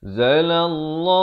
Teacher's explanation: lafz jalalah dibaca tebal 2 harakat